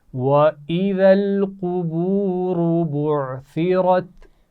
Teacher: قاف بھی موٹا پڑھا جائے گا اور را بھی موٹی پڑھی جائے گی. بعثرت عین کے مخرج کا بھی خیال رکھنا ہے، سا کے مخرج کا بھی خیال رکھنا ہے، اور را موٹی پڑھی جائے گی.